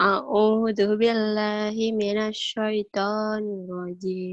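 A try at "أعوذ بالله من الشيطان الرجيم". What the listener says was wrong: Jangan dimonyongin bibirnya.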